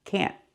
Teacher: We use a stop T. Put the tongue up and stop the air. Can't. Like that.